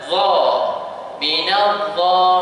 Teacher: Za dia makhrajnya sama keluar dengan huruf ta. Tapi dia tebal.